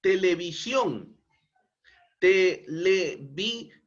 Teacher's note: el mayor impulso de voz se encuentra en la última sílaba que además termina en consonante n por eso es tildada on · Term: palabra aguda